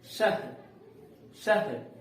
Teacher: यानी इस विसर्ग का उच्चारण जो है ह, आधा ह के रूप में होता है।